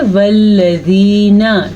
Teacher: नून को हम लंबा नहीं करेंगे क्योंकि नून के ऊपर सिर्फ और सिर्फ ज़बर है